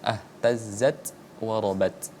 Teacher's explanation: ta itu sifatul hurufnya adalah hames. Ada seperti sedikit percikan.